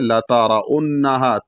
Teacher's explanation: تا کو زبر کو واضح کرنا ہے، را کو موٹا پڑھنا ہے کیونکہ را پر زبر ہے. انہا میں نون مشدد ہے، اس وجہ سے جو ہے نون پر غنہ کرنا ہے، اور اس کے بعد ہا کے بعد ایک الف ہے، اس کا مطلب اس کو ایک الف کے برابر کھینچنا ہے.